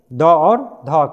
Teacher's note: द और ध क्या है सघोष ध्वनि